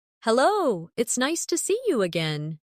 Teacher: see you often sounds like see ya in fast speech